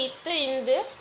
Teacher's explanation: நாவின் நுனி மேல்வாய் பல்லின் அடி